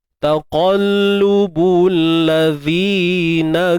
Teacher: hujung lidah kena keluarkan sedikit huruf zal hujung lidah.